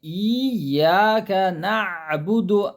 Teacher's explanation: عین کی آواز حلق کے درمیانی حصے سے نکلیں گی